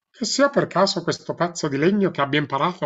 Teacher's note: Es una voz bucal, pero que no sale para afuera, no se proyecta, se queda, digamos, para atrás, un poco esperando, digamos, el encuentro y no veniendo para afuera proyectándose.